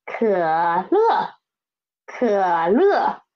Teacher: It is a third tone and fourth tone.